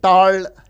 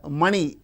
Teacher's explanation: in Tamil they use retroflex